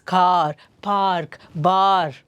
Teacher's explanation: ಸೊ ಇಲ್ಲಿ ಆ sound ದೀರ್ಘ ಬರ್ತಾ ಇದೆ, ಹಾಗಾಗಿ ದಟ್ಸ್ ಅ ಲಾಂಗ್ ವವಲ್.